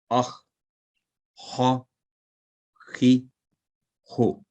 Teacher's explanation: ये thick letter है, मुंह भर के पुर करके पढ़ने वाला फुल माउथ लेटर, जैसा कि हमारे साहब ने बताया था। तो ये खौ, हलक के ऊपर वाले हिस्सा जबान की जड़ के करीब से यह हरफ अदा होता है और हमेशा भारी आवाज में अदा होता है।